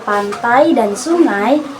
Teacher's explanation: Ciri-ciri dari deftong yaitu terdiri dari dua vokal. Diucapkan menyatu dalam satu suku kata. Ada pergeseran lidah saat diucapkan. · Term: diftong